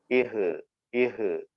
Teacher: ഇഹ് അവിടെ ഹ എന്ന അക്ഷരം വായെന്ന് കാറ്റ് പുറത്തേക്ക് വരണം. തൊണ്ടയുടെ അങ്ങേയറ്റാണ്, തൊണ്ടക്കുഴിയിൽ നിന്നാണ് ഹ് എന്ന അക്ഷരം വരുന്നത്.